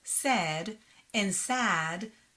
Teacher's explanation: In Hebrew, the words said and sad sound the same.